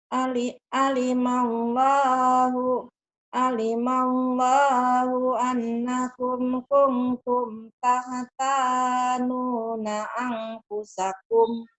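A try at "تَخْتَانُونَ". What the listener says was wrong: Bagus. Tinggal di penyakit di kho-nya aja.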